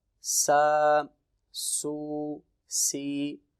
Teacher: इसको हमने सीटी की आवाज़ से नहीं पढ़ना